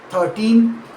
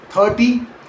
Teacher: In 13, the stress falls on the second syllable 13 with a second crisp final N sound.